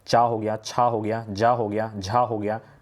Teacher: इनके उच्चारण स्थान किस होते हैं तालु से होते हैं